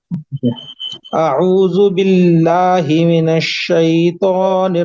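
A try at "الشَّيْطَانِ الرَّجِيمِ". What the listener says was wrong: नहीं बोलेंगे, ता बोलेंगे, शैतानिर रजीम, होठ गोल नहीं होना चाहिए ता बोलने में।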